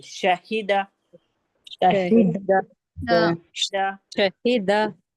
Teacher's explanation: जबान के बीच का हिस्सा ऊपर के तालू से टच हो रहा है